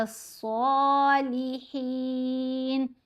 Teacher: یہاں صاد سے پہلے الف اور لام آئے تو دونوں ہی سائلنٹ ہیں